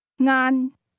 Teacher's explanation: The word lunch is pronounced with a mid-level tone.